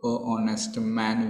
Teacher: it begins with h, but h is silent, so honest man we people say usually.